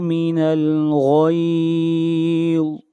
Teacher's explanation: غین اور ضا یہ دونوں حروف مستعلیہ میں سے ہیں، دونوں کو موٹا پڑھا جائے گا۔